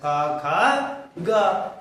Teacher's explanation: क वर्ग का उच्चारण स्थान क्या है कंठ है